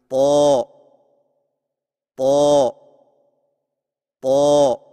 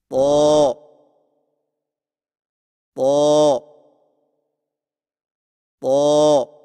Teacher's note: طا کی ادائیگی میں زبان کی نوک کو سامنے والے اوپر کے دو دانتوں کی جڑ سے لگا کر اور زبان کے پچھلے حصے کو تالو کی طرف بلند کرتے ہوئے موٹی آواز میں پڑھیں، یعنی طا طا طا۔